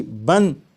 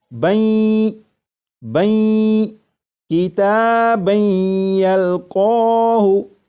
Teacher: جب تنوین کے بعد یا ہے تو تنوین کا یا میں ادغام کریں گے، جب تنوین کا یا میں ادغام ہوگا تو درمیان میں جو نون ساکن کی آواز آ رہی ہوگی وہ پھر اس طرح سے آواز نہیں آئے گی بن، بلکہ وہ آواز اس طرح ہوگی بین بین کتابن یلقاہ۔